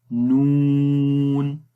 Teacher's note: इस्तिफाल के अंदर इस हर्फ को हमने बारीक पढ़ना है, मोटा नहीं पढ़ेंगे।